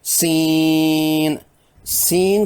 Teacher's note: عین دوسرے حرف سین میں سی یائے مدہ کے بعد نون ساکن ہے، حروف مدہ کے بعد سکون آنے سے مد لازم کی جاتی ہے۔ 6 حرکات کھینچ کر یوں ادا کریں گے۔ سین سین کا آخری نون ساکن کے بعد چونکہ کاف آیا ہے جو کہ حروف اخفاء میں سے ہے، اس لیے اس نون ساکن پر اخفاء بھی کریں گے۔